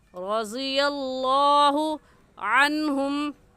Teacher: अन की नून साकिन पर गुन्ना नहीं करेंगे, क्योंकि नून साकिन के बाद हुरूफ़ हल्की में से हा आ गया है · रज़ियल्लाहु, रा के ऊपर ज़बर है तो रा को पुर यानी मोटा करके पढ़ेंगे। और मोटा करने का तरीका कि आपके दोनों होंठ गोल हो जाए। ज़ाद भी हुरूफ़ मुस्तालिया यानी मोटे हरूफ में से है, इसको भी मोटा पढ़ेंगे, चाहे इसके ऊपर कोई भी अलामत हो, ज़बर हो, ज़ेर हो या पेश हो, हर हाल में मोटा पढ़ेंगे। · लफ्ज़ अल्लाह से पहले ज़बर आ गया तो लफ्ज़ अल्लाह को मोटा पढ़ेंगे। ऐसे कहेंगे रज़ियल्लाहु अन्हुम।